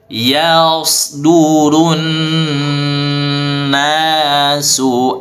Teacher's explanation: Nun tasydid didengungkan yang lama, ya, wajibul gunnah.